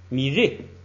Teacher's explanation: 它是升降调，不准升就只能降，一下变成4声了 ，所以变成米瑞，哎，这一连